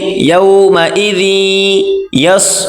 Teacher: يومئذ ذال اور یا آپس میں ملا کر پڑھیں گے